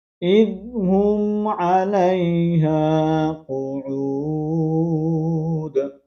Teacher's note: یہاں پر میم کا ہم اظہار کریں گے. علیہ الف مدہ ہے، ایک الف کی مقدار کے اندر کھینچ کر پڑھیں گے اور یہاں پر دال کا ہم نے کلکلے کو واضح کرنا ہے.